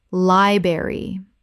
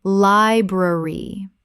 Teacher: Both the R sounds must be present. This is a three-syllable word.